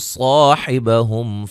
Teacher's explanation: صاد کو موٹا، الف مدہ ہے، میم ساکن کا اظہار ہے